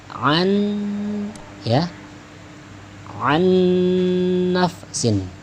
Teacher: tahan dikit, an nafsin, begitu ya, seolah-olah ada tasydidnya padahal tidak ada tasydidnya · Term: idgham bi gunnah